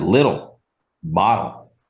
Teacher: dark L, which is like a L that's pronounced in the back of your throat